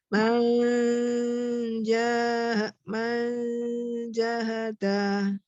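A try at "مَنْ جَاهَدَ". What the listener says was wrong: Ya, jimnya syidahkan, jaharkan lagi, jelaskan, kuatkan lagi. Man jahada.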